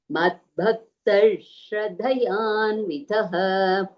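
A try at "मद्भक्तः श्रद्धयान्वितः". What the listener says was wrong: அந்த ஸ்ரத்தயான்விதः அந்த இடத்துல ஒரு த எனக்கு மிஸ் பண்ண மாதிரி இருக்கு.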